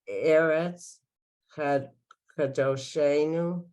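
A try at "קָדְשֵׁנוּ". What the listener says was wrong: No, oh. There's no o. There's no o, I mean. The dot is for the shin.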